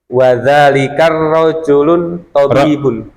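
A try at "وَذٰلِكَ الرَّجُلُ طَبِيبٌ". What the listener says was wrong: Bukan lun Pak. Diulangi. Wadzalikar tabibun.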